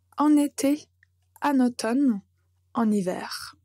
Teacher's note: Et notez bien, quand vous prononcez en été, en automne, en hiver, en fait, vous n'allez pas le prononcer comme une voyelle nasale, mais en fait, vous allez connecter en avec été ou avec automne ou bien hiver, et on va clairement entendre la lettre N.